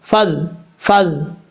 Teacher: آگے ہے فَاذْكُرُوا اللَّهَ، فا زال زبر فض، فا کو جب زال سے کنیکٹ کریں گے تو بیچ میں الف کو چھوڑ دیں گے، لمبا نہیں کریں گے